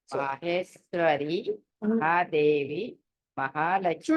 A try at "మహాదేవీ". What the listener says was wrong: చూడండి మీరు అన్ని కూడా కట్ చేస్తారు. మహాదేవి అంటున్నారు.